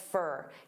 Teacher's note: for also becomes very unstressed, fur. Keep your eyes peeled for the street.